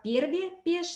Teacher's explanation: Лексемы «перви» и «пиш» в исследуемых говорах звучат как «перви», «пеш», то есть вместо литературного «и» в данном случае используется звук «э»